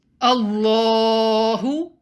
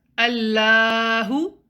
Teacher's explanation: the lamb in the name of allah should be pronounced heavy